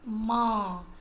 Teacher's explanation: देखिए आप बोलकर मां नाक और मुंह दोनों से आवाज आएगी हां नाक और मुंह दोनों से आती है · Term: अनुनासिक